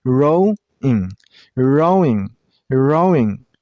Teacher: This word is only two syllables. Rowing and stress on the first syllable. I mean on the row sound